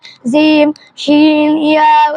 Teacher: জিহ্বার মধ্যখান তার বরাবর উপরে তালুর সঙ্গে লাগাইয়া জিম শিন ইয়া উচ্চারিত হয়